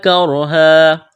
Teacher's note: را ساکن سے پہلے زبر ہے، را کو موٹا کرنا ہے